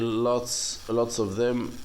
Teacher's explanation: So we can delete V in that condition when we say of. No need to mention of a lot.